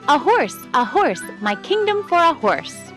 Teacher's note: the next syllable a unstressed is followed by horse which is stressed